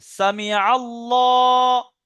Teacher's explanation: আল্লাহর লামের পূর্বে আইনের উপরে জাবার এসছে, আল্লাহর লামটা পুর হবে